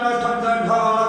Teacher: ट ठ ड ढ का उच्चारण मूर्धा या मूर्धन्य से होता है